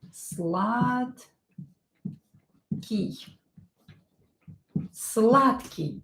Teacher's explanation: D will be pronounced as T. D is voiced, but it will become unvoiced T because it is located near unvoiced K.